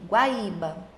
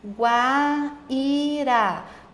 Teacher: Primeiro veio o som da semivogal, que é o som mais fraquinho, e depois veio o som da vogal. Sempre quando eu tenho um som mais fraco e depois um som mais forte, o meu ditongo vai ser um ditongo crescente.